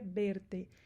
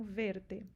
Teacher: Um espanhol ele tende a falar mais com som de B, então para o espanhol seria verte. Na América Latina eles tendem a falar mais o som de V mesmo, então verte, ok?